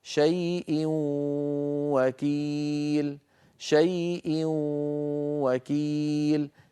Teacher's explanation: ادغم التنوين في الواو فصار النطق بواو مشدده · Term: واو مشددة